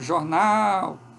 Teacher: Este outro A, que é uma vogal que ocorre em português, às vezes quando a gente vai dizer uma palavra como jornal, que tem uma vogal inicial O, aberta, mas média, não é baixa, e seguida de uma vogal que é tônica, que é o A, aberto.